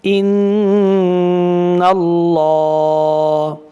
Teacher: লামটা মোটা করে পড়লাম, কারণ হচ্ছে আল্লাহ শব্দের আগে যে অক্ষরটা আসছে এই নুনের মধ্যে জবর আসছে, জবর অথবা পেশ আসলে আল্লাহ লামটাকে মোটা করে পড়তে হবে।